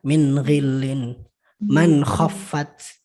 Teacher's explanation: Man amana, nun matinya jelas. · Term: idhar